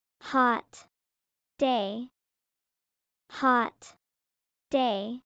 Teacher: The T in hot and the D in day are both back of the teeth sounds. They connect.